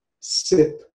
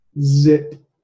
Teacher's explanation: on the left you have the unvoiced and on the right the voiced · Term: voicing